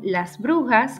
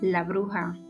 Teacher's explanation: la aspiración de ese final seguida de consonante sonora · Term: aspiración de S final